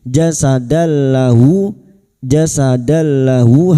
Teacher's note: Jasad fathah tanwin bertemu lam idgham bila gunah masuk pada huruf lam tanpa mendengung